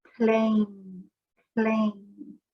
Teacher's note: at the end of this word, our tongue is at the top of our mouth, pushing on the top of the mouth, right behind the teeth.